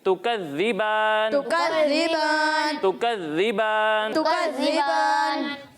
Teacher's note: दाल में सीटी की आवाज़ नहीं आएगी